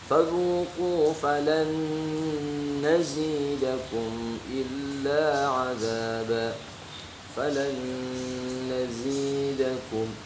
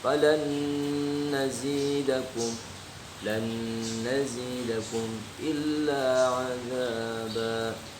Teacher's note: nun sukun bertemu dengan nun, ya, maka itu dibacanya panjang 2 harakat. Ya, pokoknya huruf yang sejenis nun sukun bertemu nun sukun atau mim sukun bertemu dengan mim sukun ya, itu dibacanya panjang 2 harakat.